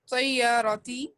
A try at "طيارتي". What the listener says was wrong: طی نہیں، تی. تی. طیارتی. یہ طا نہیں ہے، تا ہے.